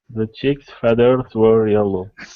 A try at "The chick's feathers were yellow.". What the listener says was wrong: Oop, don't roll the R. You're saying feathers. Okay, so watch your R.